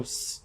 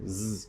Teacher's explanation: the difference between these two sounds specifically is simply the voice box